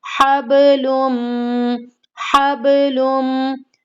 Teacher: अब यहाँ पर भी हमें सेम वही कायदा अप्लाई करना है, हब, बा की आवाज को हिलाना है, हबलुम, हबलुम। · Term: कलकला